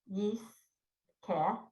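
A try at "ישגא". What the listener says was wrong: Yeah, it's a G. Yisga.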